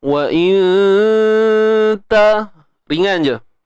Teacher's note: dengung yang berlaku pada bacaan kita, bacaan ikhfa ni perlulah nipis. Okey, perlulah baca nipis.